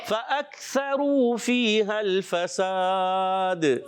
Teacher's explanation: فَأَكْثَرُوا، واو مدہ ہے، ایک الف کھینچنا